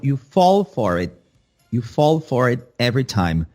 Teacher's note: Um detalhe legal aqui de entonação é ênfase nas palavras fall e for e não no it. Então, you fall for it.